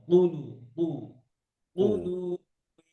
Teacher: একদম জিহ্বার গোড়া, উপরের যে নরম অংশ সেখানে কুলু